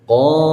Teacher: huruf qaf di sini dipanjangkan 2 harakat karena ada alif · Huruf qaf itu pangkal tenggorokan, ya, atau akhir daripada rongga mulut. · qaf ini, ya, dia tidak berdesis seperti misalnya huruf kaf